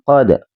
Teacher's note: Jadi ini memantul tapi posisi dia sukunnya di tengah kata maka dinamakan qalqalah sughro.